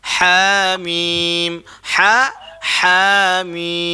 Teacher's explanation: Ha tu dua harakat saja.